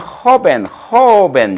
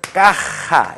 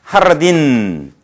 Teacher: J는 어떤 경우에서나 우리말의 히읗 발음을 좀 강하게 하세요. 배에 힘을 주고서, 그거는 강하게. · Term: 히읗 발음을 강하게